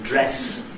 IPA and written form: ˈdres (dress)